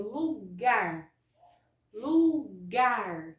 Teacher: Observa que a sílaba gar é uma sílaba que eu coloco uma intensidade maior. Eu estendo mais a sílaba na hora de pronunciá-la.